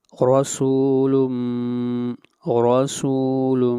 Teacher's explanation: را کو موٹا پڑھیں گے اور را کے اوپر فتحہ ہے